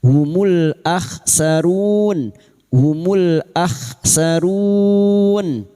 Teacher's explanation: Run diikuti oleh living letter ketika berhenti, menjadikannya mad arid li-sukun. Diperpanjang hingga empat harakat.